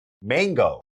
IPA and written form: ˈmæŋ.ɡoʊ (MANGO)